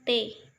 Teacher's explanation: Yang keempat, bunyi apikoalveolar, yaitu bunyi yang dihasilkan oleh keterlibatan ujung lidah apex dan gusi alveolus. Caranya, ujung lidah sebagai artikulator menyentuh kaki gigi atas sebagai titik artikulasi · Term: bunyi api kok alveolar